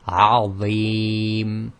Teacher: that heavy sound comes from moving the tip of the tongue slightly in onto the inside of the upper front teeth